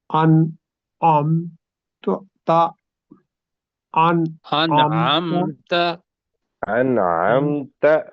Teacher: اخفا اس لیے نہیں کریں گے کہ اس کے بعد حروف حلق میں سے نکلنے والا عین ہے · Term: اظہار